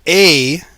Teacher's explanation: just like a lowered version of e you just bring your tongue down lower